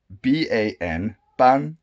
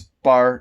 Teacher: It's just bar. If it's ban, ban, then it becomes bar. It's exactly the same. The n is dropped, and so it does influence this pronunciation of the syllable.